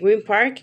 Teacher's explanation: many speakers pronounce the n more like m because of the following sound